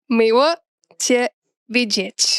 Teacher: this cool-looking L doesn't sound like an L at all. It sounds like a W.